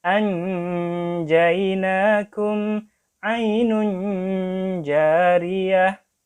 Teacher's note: Karena nun dan jim tempatnya sama, maka nanti nunnya jelas.